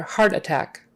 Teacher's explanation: heart is the strongest one attack is the second to most strong